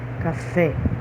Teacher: A sílaba mais forte é a última, então é uma palavra oxítona.